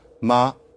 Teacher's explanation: If it's low tone, ma, then that means scold.